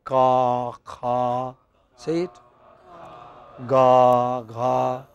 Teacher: Suppose the back of the tongue rises towards the hard palate, okay, then you get sounds like ka, kha, say it, ga, gha.